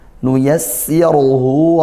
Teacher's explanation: Nuyassiruhu, ra-nya tafkhim tebal karena dhammah. Kemudian hu ini matsilah qasirah.